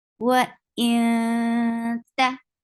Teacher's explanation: You are hiding sound of noon. You're going towards the makhraj of ta. You are keeping the sound in your nose, and this is all about ikhfa.